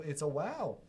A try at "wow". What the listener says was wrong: You say it with like no enthusiasm. It's just like, wow. Wow. Wow.